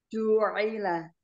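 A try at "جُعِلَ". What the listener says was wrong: Nah, jangan tidak selesai huruf ain yang berkasroh. Ju'ila itu belum selesai, tapi ju'ila. Ju'ila.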